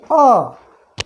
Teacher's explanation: अ जो होता है कंठ से बोला जाता है, इसलिए उच्चारण स्थान उसका कंठ हुआ